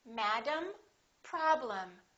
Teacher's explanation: the first syllable is stressed and the EM will sound exactly the same as the am of the word Madam